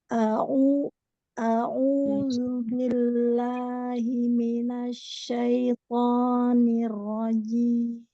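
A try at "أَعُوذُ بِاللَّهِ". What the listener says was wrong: Ain, coba ainnya. Au. Jangan naik ke atas suaranya. Au, dorong ke depan.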